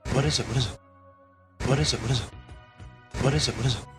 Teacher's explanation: this is a great little three-word phrase to practice it has one peak of stress what leads up to it it falls away from it and we have linking ending consonant to beginning vowel what is